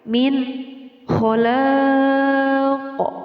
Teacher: nun mati bertemu dengan huruf kha dinamakan hukum bacaan izhar. Jadi nun matinya dibaca dengan jelas ya.